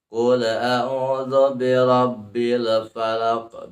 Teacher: dibaca alif lam qamariyah, dibaca jelas, kemudian tidak dibaca qalqalah karena alif lam bukan termasuk huruf ataupun termasuk hukum bacaan qalqalah, bukan, tapi alif lam qamariyah.